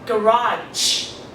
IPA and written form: ˈɡærɑːdʒ (garage)